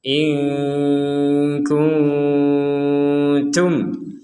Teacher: Jadi haulai in kuntum. Nun mati bertemu kaf, kita baca samar. · Nun mati bertemu kaf, kita baca samar. Nun mati bertemu ta, kita juga baca samar.